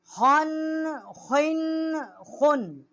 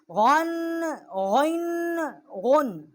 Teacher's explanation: خا اور غین جو ہیں ادنائے حلق سے ان کا مخرج ہے، جو منہ کی طرف والا حلق کا حصہ ہے وہاں سے یہ حروف ادا ہوتے ہیں